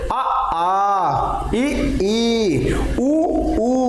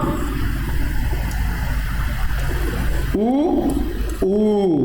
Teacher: आपके ओंठ कैसे हो गए? गोल हो गए। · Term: वर्तुल